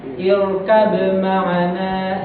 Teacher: Secara aslinya kalau yang tidak aneh tidak garib itu kan seharusnya qalqalah ya kan. Huruf ba sukun kan seharusnya qalqalah